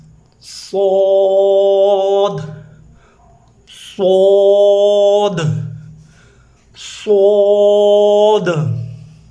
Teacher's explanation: اور چونکہ مد ہے تو مد کا قانون آپ کو بتا دیا ہے، 4 الف یا 5 الف کے برابر اس کو کھینچتے ہیں اور موٹا کرتے ہیں، زبان کو لپٹاتے ہیں، جڑ بھی اور درمیان بھی۔